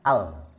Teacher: Ini ada nafas yang keluar dari samping-samping. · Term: inhiraf